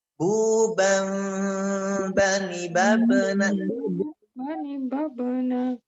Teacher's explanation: jangan sampai huruf ba yang sukun ini tertinggal pantulannya. Karena huruf ba termasuk huruf qalqalah, harus ada pantulan.